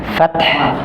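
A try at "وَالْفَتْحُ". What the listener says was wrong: Hati-hati taknya jangan dipantulkan. Idza jaa nasrullahi wal fath. Nah, ada tahnya salah. Wal fath. Fath. Jadi huruf terakhirnya tetap terbaca. Maksudnya terbaca itu sifatnya masih dapat. Jadi harus ada angin yang keluar, wal fath.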